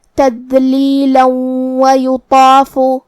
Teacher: اگر ہم یہ آیت کو اگلی آیت کے ساتھ ملا کے پڑھیں تو جو کہ حرف الواو دوسری والی آیت میں حروف الادغام بغنہ میں سے ہے، اور ادغام کا معنی ہے حرف کو حرف میں داخل کرنا، تو ہم یہ تنوین کو واو میں ملا کے غنہ اور تشدید کے ساتھ یہ حکم کو ادا کریں گے.